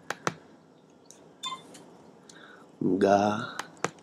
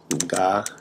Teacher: the beginning of the consonant, the nga, the pre-nasalized velar, voice velar stop right here.